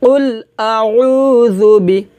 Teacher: বাজের বি, কুল আউযু বি, জুবি, ঝুবি এটা হবে না, হবে জুবি। জিহ্বার আগা উপরের দাঁতের আগার সঙ্গে লাগিয়ে পাতলা করে জাল পেশ জু উচ্চারণ হবে